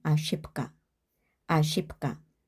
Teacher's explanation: 이런 경우 무성음 무성음으로 맞춰 주거나 유성음 유성음으로 맞춰 줘야 하는데 그 기준이 되는게 두 번째 오는게 어떤 의미냐예요. 그래서 까가 무성음이기 때문에 그 앞에 있는 배를 무성음으로 바꿔 줘야 합니다. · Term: 자음 동화